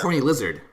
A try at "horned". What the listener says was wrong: It's not horny. It's horned. Is it really horny? Yeah, it's like the horn.